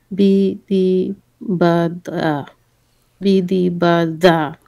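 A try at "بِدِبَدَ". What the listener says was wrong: Da, más vibración. La ba con kasra es bi, dal con kasra es di, ba con fatha es ba, y dal con fatha es da.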